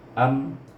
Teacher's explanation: Jadi kita gabung hamzah dengan mim tu mati. Am terus tutup bibir. Tidak panjang, satu harakah, tidak berdengung pun, ya. Iaitu mim mati, bukan mim bertasydid.